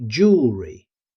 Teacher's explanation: Notice how quickly the middle syllable is spoken.